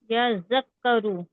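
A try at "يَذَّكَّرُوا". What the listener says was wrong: यहाँ कुछ भी खींचने का नहीं है, तो हम यज़्ज़करू, यज़्ज़करू इससे इस तरह पढ़ें, यज़्ज़करू।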